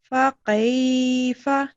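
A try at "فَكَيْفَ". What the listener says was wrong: فکیف, یہ قاف گلے سے نہ نکلے.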